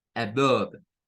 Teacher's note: esa comienza con lo que sería el sonido de un schwa